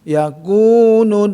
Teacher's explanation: Yakunun tahan 3 ya, kalau itu gunnah musyaddadah ya, ditahan ya dengan nun